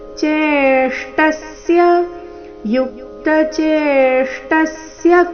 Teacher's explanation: ಶ್ರ ಮೂರ್ಧನ್ಯ ಶ್ರ ಪೂರ್ತಿ ಟ ಇವೆರಡರಿಂದ ಕೂಡಿದ ಸಂಯುಕ್ತ ಅಕ್ಷರ ಬಂದಿದೆ ಚೇಷ್ಟಸ್ಯ ಟ ಮೇಲೆ ಸಹ ಆಘಾತ ಬರಬೇಕು